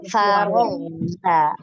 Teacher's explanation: Ngalir ghainnya, jangan memantul. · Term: rikhawah